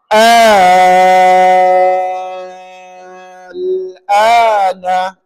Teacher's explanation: sebelum bunyi lam tu pastikan enam harakat bunyi a dulu